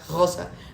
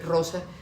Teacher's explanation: los dos esquemas de vibrar la R atrás, Rosa, vibrarla adelante, Rosa